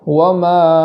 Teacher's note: وما پر مد کرنے کے بعد حمزہ کو خوب جھٹکے سے ادا کرنا ہے، اس طریقے سے وما اگر ہم جھٹکا نہیں کریں گے تو حمزہ کا وجود نہیں ہوگا۔